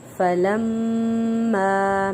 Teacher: میم مشدد ہے غنہ کریں گے